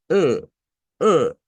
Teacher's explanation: vamos a hacer el mismo sonido de una e pero nasal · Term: vocal e nasalizada